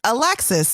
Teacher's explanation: if the emphasis was on the first syllable your name would be alex's but your name is alexis